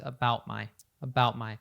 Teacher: This is a glottal T where we kind of cut the sound of the T off at the back of the throat instead of fully pronouncing it. So it is there very subtly.